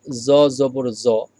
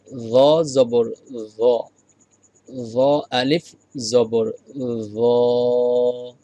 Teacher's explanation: জ জবর জ, যদি আপনি এভাবে বলেন জ জবর জ তাহলে শুদ্ধ হয় নাই। তো আপনাকে জিহ্বাটা সামনের উপরের দাঁতের সাথে লাগিয়ে বলতে হবে